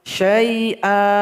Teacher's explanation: Misalkan kita berwaqaf di syai'an, maka syai'an ini menjadi mad iwad. Syai'a, A-nya dipanjangkan 2 harokat atau 2 ketukan.